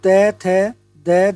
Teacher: त, थ, द, ध हमारी है दंतीय ध्वनियां, जिन्हें हम दांत की सहायता से बोलते हैं।